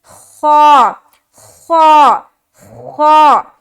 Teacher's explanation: خا بھی موٹے حروف میں سے ہے, لہٰذا اس کو بھی موٹا کر کے ہم ادا کریں گے یعنی کہ ہیوی بنا کر · تو حلق کا جو ادنا حصہ ہوتا ہے نا اس سے خا ادا ہوتا ہے